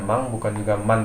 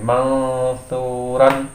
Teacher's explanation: bukan mang, bukan juga man, dia menjadi mangsuran itu sepertinya mangsuran, jadi suaranya lebih ke hidung.